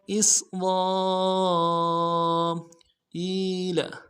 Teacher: بنی اسرائیل حمزہ کو سین کے سامنے لائیں گے، سین کی سیٹی باری ہوگی۔ را کو موٹا کریں گے، را کے ساتھ الف مدہ ہے، الف مدہ کے اوپر مد اصلی ہے، تین الف دال میں کھینچیں گے۔ اسرائیل حمزہ کو یا کے سامنے لائیں گے، یا مدہ ایک الف دال میں کھینچیں گے۔